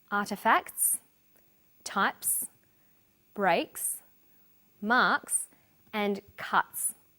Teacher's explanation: The second way S is pronounced at the end of a word is s. It's pronounced this way after voiceless consonants. P, t, k, f and th.